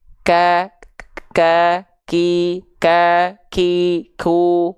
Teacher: kalau huruf Kaf dia sifatnya percikan nafas bukan mengalir nafas Kenapa karena dia disandingkan dengan sifat suara yang syiddah syiddah itu · dilafalkannya huruf Kaf itu hanya cukup percikan saja